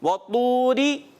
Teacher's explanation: اور را کو ہم نے باریک رکھنا ہے.